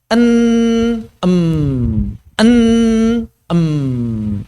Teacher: laju udara tertahan atau laju aliran suara tertahan di mulut kemudian mengalir di rongga hidung dan menghasilkan getaran pada pangkal rongga hidung kita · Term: ghunah